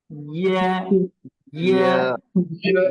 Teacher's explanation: জিহ্বার যে মাঝখানটা আছে, এই মাঝখানটা তালুতে লাগবে,